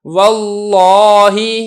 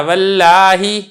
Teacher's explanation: لفظ اللہ سے پہلے زبر ہے تو ہم نے لفظ اللہ کے لام کو پر کیا ہے یعنی موٹا کر کے پڑھا ہے